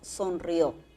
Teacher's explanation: Y le ponemos la mayor fuerza de voz ya no a la I, sino a la O.